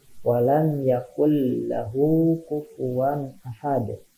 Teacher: Nun mati menghadapi huruf lam tidak berdengung. Jadi langsung masuk ke huruf selanjutnya. Nunnya tidak dibaca. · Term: idgham bila gunnah